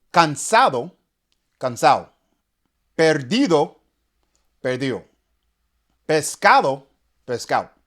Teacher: A major characteristic of Dominican Spanish is omitting the D in spoken language. Typically, any word that has a D in between 2 vowels is thrown out of the window. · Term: the silent D